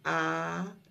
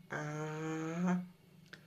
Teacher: quand on fait A, on ouvre la bouche. A la langue elle reste au fond.